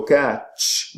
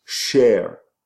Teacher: by removing the stop, the t is removed and the d is removed, and then you have either sh or j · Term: Deaffrication